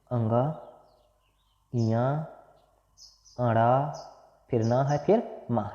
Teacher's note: इसमें पांचों के पांचों का जो उच्चारण स्थान होगा नासिका होगा